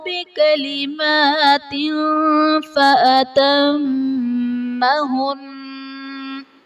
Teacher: تنوین کے بعد حروف اخفاء میں سے فا آ رہا ہے تو یہاں پر اخفاء کا قاعدہ ہوگا، یعنی تنوین میں ہم غنہ کر کے پڑھیں گے